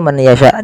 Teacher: memasukkan nunnya kepada huruf ya, dan hukumnya yaitu idgham bi gunnah